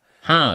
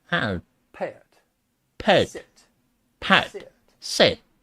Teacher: In the South, it's common to create diphthongs with vowel sounds a, and I. And you're going to follow it with an off-glide schwa sound.